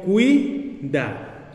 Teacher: Y vemos a la U y a la I formar una sola sílaba formando un diptongo.